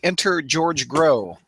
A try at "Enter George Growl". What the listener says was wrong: He said growl. Enter George Growl, not enter Growl.